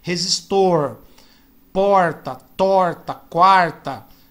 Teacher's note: nós paulistanos temos um problema com o R no meio ou no fim da palavra. A gente estica, a gente aperta muito esse R. Como por exemplo, resistor, porta, torta, quarta.